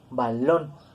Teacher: nosotros lo pronunciamos con acento en la última sílaba y es una palabra terminada en N, por lo tanto tiene acento ortográfico, balón.